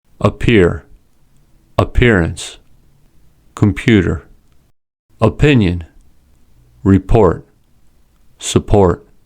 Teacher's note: These words have aspirated P sounds as P comes at the beginning of a stressed syllable. · Words with aspirated P. When P comes at the beginning of a word or at the beginning of a stressed syllable, it is an aspirated P. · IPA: [pʰ]